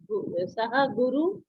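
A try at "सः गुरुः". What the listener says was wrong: I think it's better if we say Saha Guruhu. We shouldn't forget the Visarga. Saha Guruhu, Eshaha Guruhu.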